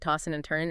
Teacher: You often drop the G sound, right? Tossing and turning and the D and N might blend. · Tossing and turning, you often drop the G sound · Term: G dropping, the G dropping